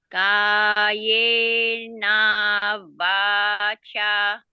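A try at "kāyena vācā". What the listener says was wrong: Yes, very good.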